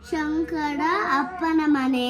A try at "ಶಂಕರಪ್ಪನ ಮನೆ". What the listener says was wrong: ಶಂಕರ ಅಪ್ಪನ ಹೆಂಗೋ ಆಗುತ್ತೆ, ಅದು ಶಂಕರಪ್ಪನ ಮನೆ. ಶಂಕರಪ್ಪನ ಮನೆ. ಶಂಕರಪ್ಪ ಕಣೋ. ಶಂಕರಪ್ಪ ಶಂಕರ್ ಅಲ್ಲ, ಶಂಕರಪ್ಪ ಮನೆ. ಅಪ್ಪನ ಹೌಸ್ ಅಂದಂಗ ಆಗ್ತಾ ಇದೆ.